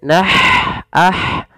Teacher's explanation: ada ha yang memiliki sifat namanya hamas, mengalirnya nafas kita